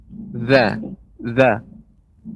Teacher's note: Za itu lidah ya, lidah kita bertemu dengan gigi seri. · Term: huruf za